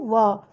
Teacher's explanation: व दंत भी और ओष्ठ भी दोनों मिलते हैं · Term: दंतोष्ठ, दंत ओष्ठ